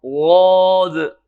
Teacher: غاد میں زبان فولڈ ہو کے تالو کے ساتھ نہیں لگتی بلکہ زبان کی سائڈ جو ہے وہ داڑھوں کے ساتھ ٹچ ہوتی ہے